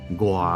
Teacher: 你要记得要强调前面的浊音